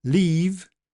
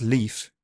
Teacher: leave is long, whereas leaf is shortened